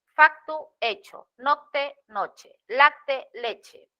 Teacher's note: El grupo consonántico CT evolucionó a che